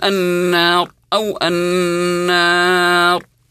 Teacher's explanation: مد عارض للسكون كذلك بمقدار حركتين او اربع او ست حركات